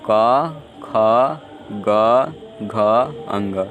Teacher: आप उच्चारण करके देखिए तो इसमें कंठ से यह स्वर यह व्यंजन बोला जाता है।